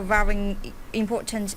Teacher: saying very she was thinking about what's gonna come next so she kind of put this very and the important she kind of blended these together and the very became varying